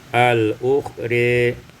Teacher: Pada ayat yang ke-9, al-ukhra, imalatu fathatir ra wal alif, dibaca imalah fathah ra dan alif menjadi al-ukhri.